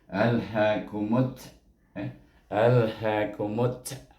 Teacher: Baik, tetapi dia bertemu dengan kalimah yang berikutnya bermula dengan alif lam syamsiah, iaitu huruf syamsiah dan huruf ta. Maka kita kena baca mim ini diidgham syamsikan dengan huruf ta.